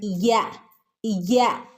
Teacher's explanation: നടുഭാഗം മേലെ അണ്ണാക്കിന്റെ നടുഭാഗത്തിൽ തട്ടുമ്പോഴാണ് യ എന്ന് വരുന്നത് അപ്പൊ നാവിൻറെ നടുഭാഗം നാവിൻറെ മധ്യഭാഗം മേലെ അണ്ണാക്കിന്റെ മധ്യഭാഗവും കൂടെ ചേർന്നിട്ടാണ് യ യ എന്നുള്ള ശബ്ദം പുറത്തുവരുന്നത്